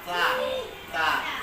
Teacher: Ujung lidah dirapatkan dengan gigi atas. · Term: huruf ta